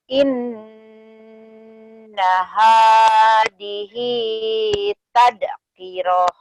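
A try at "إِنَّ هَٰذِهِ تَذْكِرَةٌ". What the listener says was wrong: Za-nya, Teh, rapuhkan ya. Hadhi lagi, Teh. Inna hadhihi tadhkirah.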